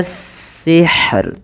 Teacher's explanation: rohnya juga tetap dibaca dengan bacaan tipis rohnya